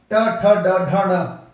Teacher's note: मूर्धन्य जीभ टर्न कर जाए, मुड़ जाए